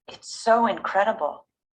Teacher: a short W sound between the vowels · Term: linking